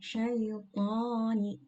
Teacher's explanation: Syaitani, jadi bibirnya tidak maju. Syaitani cukup dibuka saja ke bawah, tapi bunyinya menjadi tebal karena huruf ta ini termasuk ke dalam huruf yang tebal. Isti'la, pangkal lidah juga terangkat ke atas.